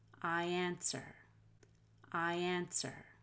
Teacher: link those words together with a y